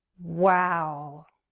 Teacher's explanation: there's a third possible intonation pattern when we feel very surprised it's more like disbelief we can use a strong slow fall